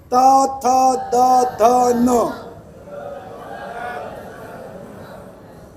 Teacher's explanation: दंत्य यानी आपकी जिबान जो है ये दांत को टच करेगी